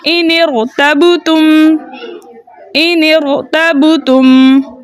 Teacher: نون ساکن پہلا ساکن، حمزۃ الوصل دوسرا ساکن اور را ساکن تیسرا ساکن. ہم پہلے ساکن کو زیر دے کے را کے ساتھ ملا کے پڑھیں گے کیونکہ حمزۃ الوصل درمیانے کلام میں آنے کی وجہ سے حذف ہو گیا.